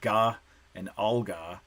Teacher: the g is not produced in the exact same place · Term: co-articulation